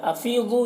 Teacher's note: یا مدہ ہے، ایک الف کے برابر کھینچیں گے